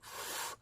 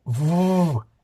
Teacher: We have F in one hand, that is unvoiced, like F, and V on the other hand, that is voiced.